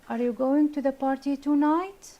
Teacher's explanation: the speaker's voice Rises on the last content word or phrase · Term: rising intonation